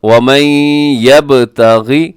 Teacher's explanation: جی اس میں شروع میں ادغام ہے، وَمَن یب اور با جو ہے وہ قلقلہ کیجیے گا